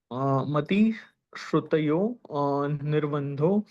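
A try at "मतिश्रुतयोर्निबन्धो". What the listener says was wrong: सुनो, इसको निर्बंध नहीं बोलना है, इसको इसकी रेप को यो के साथ बोलना। मति श्रुतियोर है।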